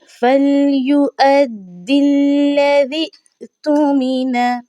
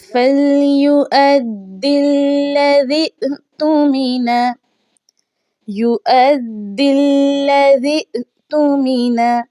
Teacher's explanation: दाल को हमने वाव के साथ मिलाना है, या और ये जो खाली अलिफ है इसको हमने नहीं पढ़ना।